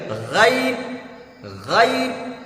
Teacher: کٹ کے پاس سے تھوڑا غرغرہ کی آواز نکالیں گے تو نکلے غین۔